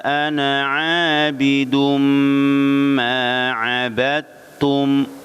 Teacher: tapi dibaca abadtum, masuk dalnya idgham ke ta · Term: Idgham mutajanisain